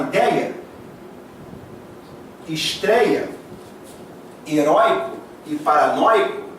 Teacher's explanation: Repara que aqui, quando você fala ideia, estreia, heróico e paranoico, o oi é ditongo aberto, o ei é ditongo aberto